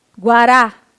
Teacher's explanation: A última sílaba é a sílaba tônica.